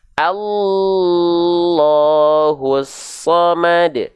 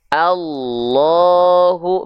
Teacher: kalau selain nun dan mim, contohnya di sini adalah lafaz Allah, ada selain nun dan mim yang bertasydid, maka cukup dilafalkan dengan cara ditekan saja.